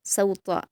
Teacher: सौता में आप ध्यान रखेंगे कि सीन को बारीक और त्वा को पुर पढ़ना है। सौता ऐसे पढ़ेंगे, सौता नहीं करेंगे यानी स्वाद नहीं बनाएंगे सीन के मखरज को, तो इसका आप ख्याल रखते हुए पढ़ेंगे।